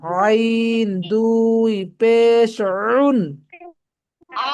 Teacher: কণ্ঠনালীর মাঝখানে চাপ দিবেন জোরে